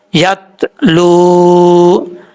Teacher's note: رسولا، میم زیر نون من، ہا پیش میم ہم، من ہم، یا زبر تا یت، لام پیش واؤ لو، یت لو، لام کے بعد واؤ مدہ ہے، ایک الف کی مقدار لمبا کر کے پڑھیں گے، الف کو پڑھنے کی ضرورت نہیں ہے، واؤ مدہ ہے وہ پڑھا جائے گا۔